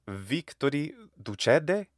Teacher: NT often sounds like just a slightly nasalized D or D sound